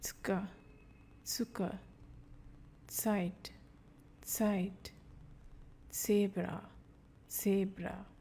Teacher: Die Aussprache von Z, which gives a TS sound.